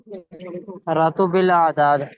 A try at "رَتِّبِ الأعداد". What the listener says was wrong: راتوبل نہیں ہے، روتیبل. ٹھیک ہے، را اور تا پہ شد ہے، اور اس پہ زیر ہے، تا پہ زیر ہے. ٹھیک ہے، اور با پہ بھی زیر ہے. رتیب، ٹھیک ہے، رتیبل اعداد.